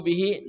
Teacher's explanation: ya murukum bihi nah di sini mim mati bertemu ba sama ikhfa syafawi dibaca samar dan dengung kedua mulut dibuka sedikit